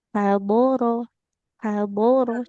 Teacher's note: jadi yang tebal hanya huruf shadnya saja